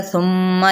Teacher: यहाँ पे गुन्ना मीम पे हो रहा है